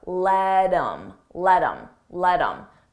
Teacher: I take that H off of him, I drop the sound, and then I'm left with im, but I combine it with the word before.